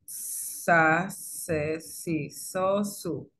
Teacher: la sibilante alveolar sorda con aire pulmonar agresivo. La sibilante alveolar sorda con aire pulmonar agresivo es la que conocemos como la S, en la que el ápice de la lengua está en en los alveolos.